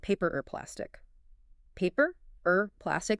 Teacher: Because of connected speech, the words blur together. The or gets reduced to a tiny sound.